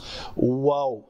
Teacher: واو ہونٹوں سے ادا ہو رہا ہے، گول کر رہا ہے، زبان کہیں ٹچ نہیں کر رہی